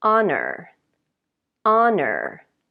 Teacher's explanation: so honor the h is not pronounced